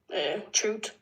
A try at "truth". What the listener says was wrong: So do you ever pronounce the TH sound? So you don't really say it.